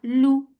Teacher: for Dhamma circular lips, the sound is short